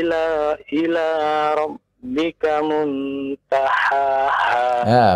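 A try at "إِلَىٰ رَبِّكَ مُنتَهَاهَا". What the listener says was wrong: bukan hak hak dari tenggorokan yang paling bawah Ha kan dari tengah bukan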